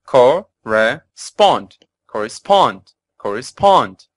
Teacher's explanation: the academic word list and as our listeners have already heard correspond has three syllables with the stress on the third and final syllable